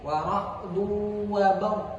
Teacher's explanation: Adapun al-baqun membacanya dengan idgham bi gunnah